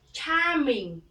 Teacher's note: Âm tiếp theo là âm A dài cong lưỡi, R, charming, you have a charming, smile, you have a charming smile.